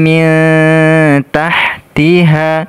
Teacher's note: tahtiha nun sukun ketemu huruf ta dibaca ikhfa ikhfa Hakiki ya nun sukun ketemu huruf ta dibaca ikhfa Hakiki dengung kemudian disamarkan